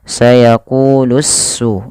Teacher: alif dan lamnya harus diidghamkan kepada huruf sin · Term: alif lam syamsiyah